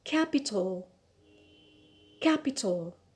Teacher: so the stress here is on the first syllable